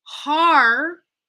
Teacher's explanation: So if you're saying hard, like hard, like with a British kind of accent with no R sound, you're going to want to pretend that hard is a two-syllable word now, where the first syllable finishes on R and the next syllable starts with the D